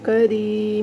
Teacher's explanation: کاف زبر کا، را یا زیری، را کو باریک پڑھنا ہے کیونکہ اس کے نیچے زیر آ رہی ہے